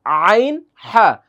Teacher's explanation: আইন এবং হা এগুলো হচ্ছে কন্ঠনালীর মাঝখান